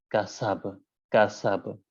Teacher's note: جب آپ نے اس حرف با کو ساکن کیا تو اب یہاں کے اوپر قلقلہ ہے، اور قلقلے کے اندر ہلکے سے ادا کرنا ہے